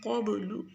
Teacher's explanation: من کے اوپر غنہ کریں گے، قبل قاف کو موٹا پڑھیں گے، با پہ قلقلہ کریں گے